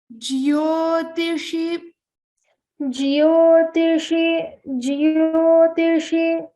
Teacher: it is not jo it is jyo so remember to pronounce the yakara in this